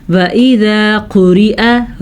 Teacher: را کو باریک پڑھیں گے کیونکہ را نیچے زیر ہے